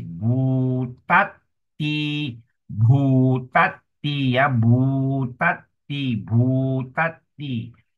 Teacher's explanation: So it is aspirated B